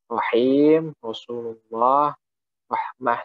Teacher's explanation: huruf ro ini keluar dari ujung lidah bagian atas, itu dekat dengan gigi seri · huruf ro ini yang tipis biasanya keluar pada awal kata, yaitu seperti kata rahim, Rasulullah, rahmah, seperti itu.